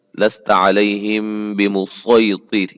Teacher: اس کو خالص صاد کے ساتھ پڑھنا ہے، سین نہیں، اس کے سین کی آواز نہیں آنی چاہیے